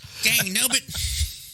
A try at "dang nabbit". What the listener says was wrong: You didn't even say it right. Jesus. It's dang nabbit, not gang nubbit.